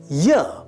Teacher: produced with the front of the tongue, approaching the hard palate without contact or friction. The vocal cords vibrate, airflow remains smooth and unobstructed. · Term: palatal approximant